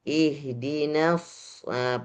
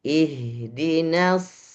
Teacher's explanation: huruf shad bukan keluarnya dari bibir, tapi keluarnya dari lisan. Ya, keluar dari lisan yang berpas-pasan atau bertemu dengan mm geraham yang agak sedikit depan.